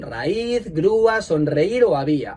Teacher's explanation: Y es así, algunos ejemplos son raíz, grúa, sonreír o había. En todos esos casos tenemos una vocal cerrada tónica y una vocal abierta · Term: hiato